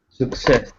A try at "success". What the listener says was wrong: So it's not success, it's success. Second syllable.